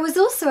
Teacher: you can see that was ends with a consonant and also starts with a vowel so we can blend them